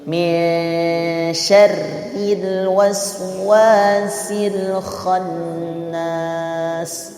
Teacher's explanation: bunyinya itu tidak sampai ke ng, tidak sampai ke hidung, ya, tidak bunyi sang atau syang. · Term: ikhfa huruf shin